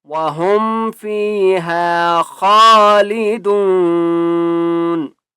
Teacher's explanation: خا کو موٹا کر کے پڑھیں گے